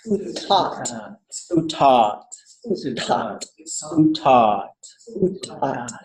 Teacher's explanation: All low tone, all long, right? Sutat.